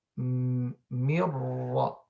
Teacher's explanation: While in al-idgham, mirra, the noon is not pronounced at all.